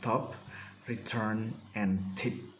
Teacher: and tip t is produced with the vocal folds not vibrating the tip of the tongue is in contact with the alveolar ridge and the air comes out of the lungs through oral cavity